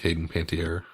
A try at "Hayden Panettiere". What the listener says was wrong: I love how her last name is pronounced Panettiere, and the way that you pronounce it sounded like Panty Air. French.